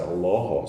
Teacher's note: It's the only L in Arabic that stands by itself that has that dark pronunciation.